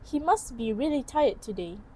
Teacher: Again, the sound t in must is dropped.